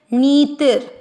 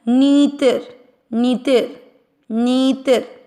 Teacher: नी की मात्रा लंबी खींचनी है और ती को छोटा रखते हुए आधा र बोलना है